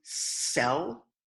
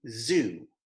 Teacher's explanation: They have the exact same position in your mouth when you form them. However, one version is voiced and one version is not. The first pair is S and Z. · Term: voiced and unvoiced sounds